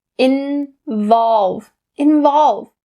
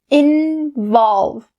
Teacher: that ah has to be really round and clear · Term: ah sound